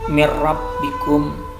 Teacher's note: nun mati bertemu dengan ra, ini adalah bacaan idgham bila gunnah